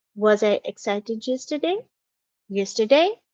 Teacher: So my voice is rising at the end. So this is how we ask a question to which the answer can be yes or no.